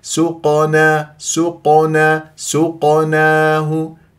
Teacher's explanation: القاف ساكنه مقلقله مع تفخيم مرتبه مقلقله صغرى لان في وسط الكلام